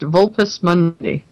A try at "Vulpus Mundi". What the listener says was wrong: Now, if you're gonna say that Latin style, you got to say Vulpus Mundi. the V would be like a W. In Latin, they pronounced it like a W, so it'd be Vulpus Mundi.